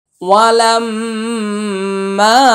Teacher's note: ওয়াও জবর ওয়া, লাম মিম জবর লাম, ওয়ালাম মিম আলিফ জবর মা, ওয়ালাম মা, ওয়ালাম মা। এটা লামটা হচ্ছে ওয়াজিব গুন্না, মাটা হচ্ছে একালিফ টান।